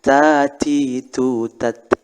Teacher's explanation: Tat ada angin, maka hukumnya adalah hams, ada angin yang keluar.